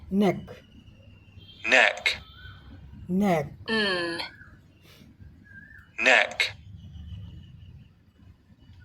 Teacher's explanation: जो अगला दांत है ऊपर वाला इसके पीछे हमारी जीभ टच करती है और वहां दबाव बनाकर रखती है और यहां जो है गले में कंपन होता है।